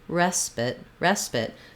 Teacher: so it's a reduced vowel it's going to be short and it's not going to have that eye diphthong